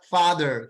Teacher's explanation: এফ এর উচ্চারণ কি হবে উপরের দাঁত নিচের ঠোঁট লিখে দিছি উপরের দাঁত নিচের ঠোঁট স্পর্শ করে উচ্চারণ করতে হবে